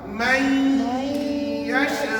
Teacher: Sambil-sambil kita baca, kita kena dengung dua harakat.